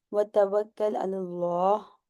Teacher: جی، واو کو ہونٹ کھول کر کے ادا کریں گی. اس کے بعد کاف کی جو تشدید ہے اس کا خیال رکھیں گے کہ 2 دفعہ سنائی دے